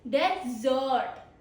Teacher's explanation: Stress on second syllable, it is a verb.